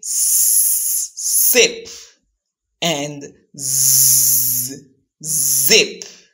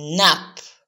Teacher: the tip of the tongue is pointing towards the alveolar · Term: alveolar sounds